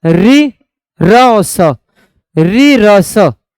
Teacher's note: रि र स, ये कह सकते हैं हम मूर्धा से बोले जाते हैं।